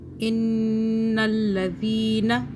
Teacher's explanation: نون مشدد، یہاں پہ ہم غنہ کریں گے 2 سیکنڈ کا۔ ان الذین، نون کو نہیں کھینچنا۔